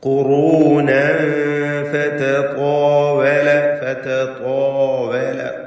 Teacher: ഖുറൂനൻ ഫതതാവല ഫതതാവല ത്വാ എന്ന ആ ശബ്ദം ത്വായിനും അതിന്റെ ദീർഘാക്ഷരമായ അലിഫിനും തഫ്ഖീമാണ്. തടിപ്പിച്ച് സ്വരഭാരത്തോടെ അവിടെ ഉച്ചരിക്കണം. · ഖുറൂനൻ ഫതതാവൽ തൻവീനും ശേഷം ഫാഉം ഇഖ്ഫാ ഹഖീഖി നൽകി വ്യക്തമാക്കി മണിക്കുക. മണിക്കലിൽ തർഖീഖാണ്.